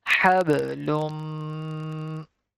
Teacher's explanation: We're gonna take the sound into our nose because there is a rule of idgham applying here.